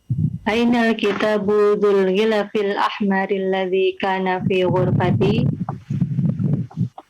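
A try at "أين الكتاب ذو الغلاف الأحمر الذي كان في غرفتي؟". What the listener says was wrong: Dzul ghilafil ahmari. Nah, coba panjangkan lamnya di sana. Dzul ghilafil ahmari.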